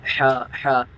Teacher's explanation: جیسے ہم نے ہا کی ادائیگی کی تو حلق کے اوپر والے حصے سے ادا ہوتا ہے، یہ جو ہا کی حلق کے درمیان والے حصے سے ادا ہوتا ہے۔